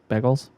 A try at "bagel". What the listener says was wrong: Because you said you pronounced bagel wrong twice in that sentence. You said biggles and bagels. Bagel. Yeah, I know, but you were walking through all the vowels. You were like bagel and biggle.